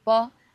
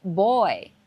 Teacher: in Chinese bo is unvoiced. But in English B is voiced.